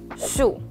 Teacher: we have the fourth tone. It's 第四声, a falling tone.